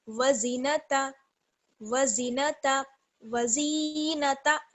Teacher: اس میں آپ خیال رکھیں گے کہ زی کو کھینچنا نہیں ہے بالکل بھی، جلدی سے پڑھنا ہے۔